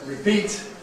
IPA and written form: rɪˈpiːt (repeat)